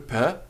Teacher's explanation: P followed by H, which is read as per, with a bit of aspiration with air coming through, per. And we have T followed by H, ter, and we have letter C followed by H, not pronounced as ch, but as k, a soft breathing afterwards.